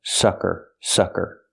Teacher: We use the short uh sound like up and cup it's closed and relaxed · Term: short sound